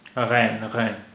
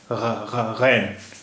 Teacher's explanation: It requires a lot of practice, and there is no letter in English to represent this sound. Ghain, it is a glottal sound, and it is produced at the back of the throat. Ghain. When you gargle, that sound, ghain.